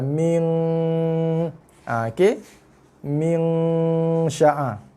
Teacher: So NG tu mestilah NG yang keluar daripada hidung, dan juga dia mesti kadar hidung dia tidak boleh kurang daripada 2 harakat. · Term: dengung